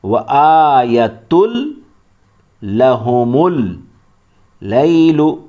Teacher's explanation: ادغام معنی ملانا. اس میں تنوین کو لام میں ملا دیں گے اور پورا ہی ملائیں گے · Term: ادغام تام